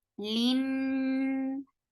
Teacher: give a nice gunna, because this is akmal gunna, the longest gunna in Quran